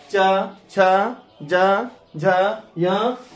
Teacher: अर्थात ये इतिस यानी ह्रस्वी दीर्घ ई च छ ज झ य और तालव्य स्व का उच्चारण स्थान तालु से होता है। अर्थात आपका जीभ ऐसे वर्ण के उच्चारण में जीभ जो है तालु में सट जाता है। इसीलिए इसको तालव्य वर्ण कहते हैं।